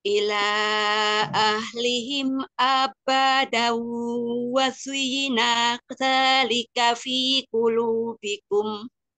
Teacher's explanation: Na dan ka jangan dipanjangkan, satu harokat.